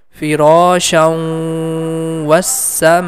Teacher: Vowel is appearing in green color, which means the previous sound is automatically going to merge with letter Vow. This Shan sound is going to connect with Vow with nasal sound, and this sound we have to make it for two count.